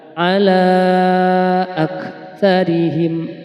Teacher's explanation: Mad Jaiz munfasil ala panjangnya lima harakat